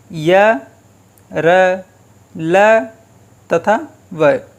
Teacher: जिन व्यंजनों का उच्चारण करते समय जिह्वा पूरी तरह से मुख के किसी भाग को नहीं छूती अंतस्थ व्यंजन कहलाते हैं। इनका उच्चारण स्वर तथा व्यंजन के मध्य होता है।